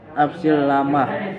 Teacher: idgham bila guna karena ada huruf nun mati atau tanwin bertemu dengan huruf la. Cara membacanya masuk dengan tidak mendengong.